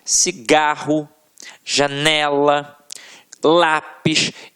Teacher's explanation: a sílaba que a gente proferiu com mais força sempre esteve na penúltima sílaba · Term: paroxítonas